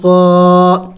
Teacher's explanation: صاد سیٹی والے حروف میں سے ہے، پڑھتے وقت منہ سے سیٹی کی آواز نکلنی چاہیے